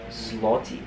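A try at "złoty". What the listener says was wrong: It's not an L. You see that character? It's very different.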